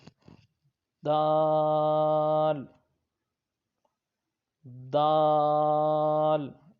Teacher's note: اس کو تھوڑا سا لمبا کر کے پڑھیں گے تو یہ حروف نطعیہ ہے، یعنی زبان کی نوک اور اوپر کے دانتوں کی جڑ سے ادا ہوگا